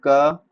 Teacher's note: इसमें क वर्ग जो है वो कंठ से आता है